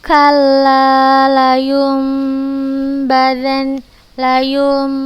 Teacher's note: Apabila nun sukun atau tanwin bertemu dengan huruf ba, maka kita ubah suara nun sukun ini menjadi suara mim dengan gunnah, dengan dengung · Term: iqlab